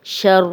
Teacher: اب را پہ زبر ہے، را موٹی پڑی جائے گی دونوں دفعہ